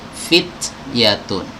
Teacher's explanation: huruf ta ketika disukun ya, maka dia harus dimunculkan sifat hamsnya. Hams itu aliran nafas ya. Fit bukan fit tapi ada sedikit sisa nafasnya.